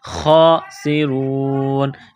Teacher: ہم الخاسرون، خا کو موٹا کرنا ہے 1 الف کے لمٹ میں کھینچنا ہے. سین میں سیٹی کی آواز پیدا کرنی ہے، سین کو باریک کرنا ہے. را کو واو کے ساتھ ملانا ہے.